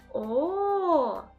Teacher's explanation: губи витягнуті вперед, округлені, зуби закриті губами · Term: звук О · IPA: [о]